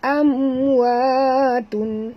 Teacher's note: Mim mati bertemu waw, tak boleh dengung, izhar, syafawi ya.